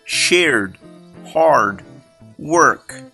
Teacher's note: In the words shared, hard, work, most Brits will not pronounce the R, but most Americans will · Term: R sound